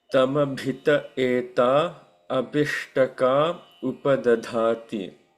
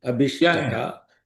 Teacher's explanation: Not abhishtaka is incorrect, because the sandhi doesn't make it long I. So the correct pronunciation and the context is abhishtaka without long vowel.